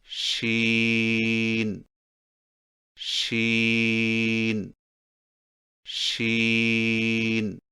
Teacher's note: شین کی ادائیگی میں زبان کے درمیان کو تالو کی طرف بلند کرتے ہوئے باریک اور پھیلتی ہوئی آواز میں پڑھیں